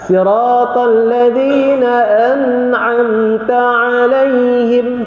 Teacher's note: sebab nun bertemu dengan ain tu hukum dia apa? Izhar halqi.